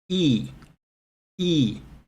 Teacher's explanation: not supposed to read them as letters they're symbols okay so when your tongue is up and forward forward in your mouth okay you make the sound e e